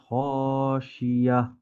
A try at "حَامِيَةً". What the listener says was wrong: খ না এটা হামিয়া